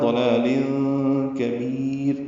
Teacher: ضلال کبیر، کاف باریک ہے، با کو لمبا کریں گے. یا مدہ کے بعد را ساکن آ گئی تو را باریک ہوگی، اور وقف کریں گے تو لمبا کریں گے.